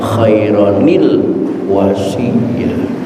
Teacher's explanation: mau tidak mau nunnya ini harus dikasrahkan